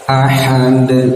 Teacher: Bahu sama ya, ada tanda alis dibaca 4 sampai 5 harokat. Ahad dal yang dimatikan ya, maka harus dipantulkan. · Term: qalqalah